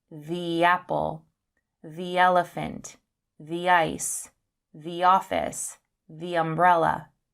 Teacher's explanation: We say thee with a long sound when the comes before a word that begins with a vowel sound.